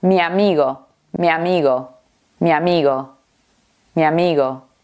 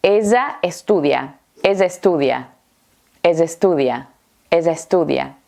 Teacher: Bueno, pero atención porque no hace falta que sea la misma vocal para hacer esto. Los hispanohablantes también unimos o fusionamos vocales diferentes.